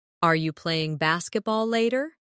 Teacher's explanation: In fast speech, are you can sound like are ya